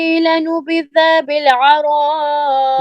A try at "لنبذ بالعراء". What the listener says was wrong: لنبذ بالعراء दाल को लंबा नहीं करना بالعراء